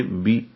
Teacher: با کو جلدی سے پڑھیں گے، بی، با زیر بے نہیں، با زیر بی۔ را کو پر پڑھیں گے، را کو با سے ملائیں گے، رب، بے رب بن۔